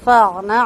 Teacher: عین کی آواز ہلکی سی چلے گی، بہت زیادہ نہیں چلے گی، توسط کے ساتھ آواز آئے گی یعنی درمیانی حالت میں رہے گی۔